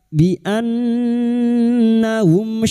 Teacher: mim sukun bertemu shin, mim sukun dibaca jelas tanpa mendengung idhar syafawi. Bertemunya mim sukun dengan huruf hijaiyah selain mim dan ba, maka bunyi mim sukun dibaca jelas tanpa mendengung.